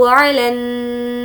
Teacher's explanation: नून पर तजदीद है इसलिए गुन्ना होगा